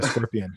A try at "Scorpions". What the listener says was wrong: Well, stop saying Scorpion, because it's the Scorpions. Scorpions. Plural. You said Scorpion. Scorpions.